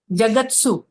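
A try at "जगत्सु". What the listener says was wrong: Dhanyavada. Uttam.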